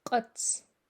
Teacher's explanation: not only does it come from the very back of the mouth using your uvula but it also pops out a little harder than a regular back k